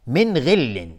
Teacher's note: من غل نون ساکن بهش غین اظهار حلقی، غین از حروف استعلا است، غلیظ تلفظ میشه